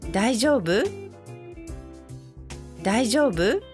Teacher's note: this can become a question if you raise the tone at the end.